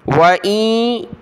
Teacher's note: नून साकिन की वजह से नाक में आवाज़ पैदा करेंगे